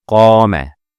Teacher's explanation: The alif stretched the fatha of the qaf.